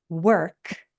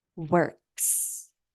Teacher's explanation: the sound before S in the word work is no voicing. So the S is pronounced S, no voicing.